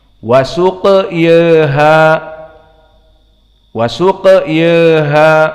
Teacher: qiraah Abu Amr dan juga qiraah Wars an-Nafi' dibaca dengan taklil wasuq yaha, wasuq yaha, karena termasuk dari fi'il yang akhirnya adalah alif layyinah.